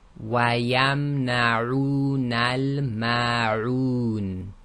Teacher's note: the length of the dhamma waw is 2 counts relative to the normal dhamma, and this will be checked again by your tajweed teacher.